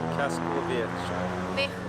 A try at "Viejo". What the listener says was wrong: Viejo. You're saying, you're pronouncing with the Portuguese. It's viejo. Viejo. Viejo. No, jo. Viejo.